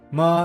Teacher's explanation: First tone, high level. Ma means mom, said in a steady flat tone, like holding a musical note.